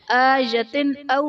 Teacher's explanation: آیتن او میں تا کے نیچے دو زیر کی تنوین، تنوین کے بعد حروف حلقی میں سے حمزہ آ رہا ہے تو یہاں بھی اظہار کا قاعدہ ہوگا، یعنی تنوین میں ہم غنہ نہیں کریں گے